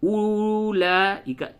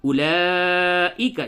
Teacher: جہاں پہ بھی اولئک ہے، اولئک اس واو کو نہیں پڑھیں گے